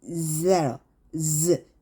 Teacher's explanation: z는요 s랑 똑같은데 z는 성대가 울려요. 그래서 얘는 이 사이로 소리가 나는데 떨어주세요.